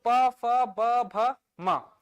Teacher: प फ ब भ म में क्या टच हो रहा है भाई दोनों होठों आपस में टच कर रहे हैं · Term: ओष्ठ ध्वनियां